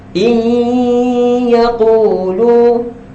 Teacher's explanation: Kita bagi ada bayangan huruf ya dalam dengung.